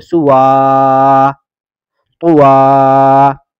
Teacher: اس یا کو ختم کر دیں گے اور واو کو کھینچ کر پڑھیں گے